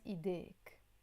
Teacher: So I'm not gonna say idainak. We drop the noon and of course the a sound, and it becomes ideik.